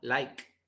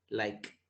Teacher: Cuando decimos like, al final, like, yo no siento que me vibra en sí las cuerdas vocales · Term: voiceless